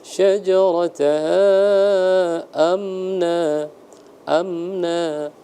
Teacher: izhar syafawi jadi tidak dibaca dengung